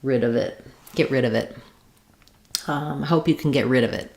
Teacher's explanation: going to sound like one word with the rid part stressed. · Just naturally linking those last three parts together, holding a little longer on rid, and making a stopped unreleased T for get.